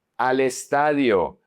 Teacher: al estadio, if you notice, you connect al the l connects to the e